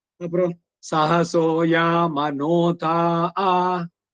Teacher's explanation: ಉದಾತ್ತಕ್ಕೆ ಹೋಗಿ ಸಡನ್ ಕೆಳಗೆ ಬರುವಂತದ್ದು. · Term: swarita